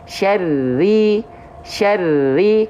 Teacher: Tapi kalau pakai tasydid, syarri, bukan ditahan tapi ditekan.